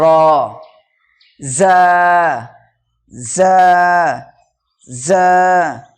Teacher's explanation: জিভের আগা এবং সামনের উপর নিচে 2 দাঁতের আগার সাথে লাগিয়ে উচ্চারিত হয় জা